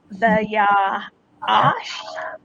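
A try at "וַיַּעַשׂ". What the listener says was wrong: So the last one is an S. It makes the S sound, right? Because the dot is not on the right. If it's not on the right, it's a sin.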